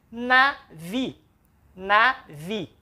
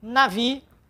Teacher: a sílaba tônica é a última